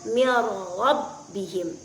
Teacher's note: maka cara membacanya adalah menyatukan huruf nun ke dalam huruf ra. Contohnya mir rabbihim, tanpa meninggalkan sifat takrir dari huruf ra tersebut. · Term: idghamun bil ghairi gunnah, idgham bil ghairi gunnah